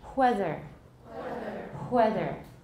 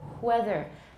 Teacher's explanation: taiwanese sometimes do wrong is they make it a velar fricative it's not velar it is bilabial